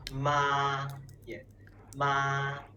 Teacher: When we go to the dentist, we say, and open our mouth wide, right? That is the sound for the first tone. It is a high, flat sound.